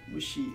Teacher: Mushi has the accent on she, so there's no way you could devoice that. Because if not, the word would have no accent, it'd be Mush.